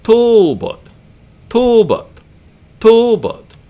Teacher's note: the long vowel is the first syllable, and the short vowel is the second one